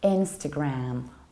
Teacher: So you stress the first syllable and you don't reduce the ending.